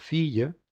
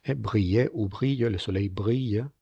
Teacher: Es una semivocal, está entre la vocal y la consonante, no confundirla con nuestra L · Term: semivocal iod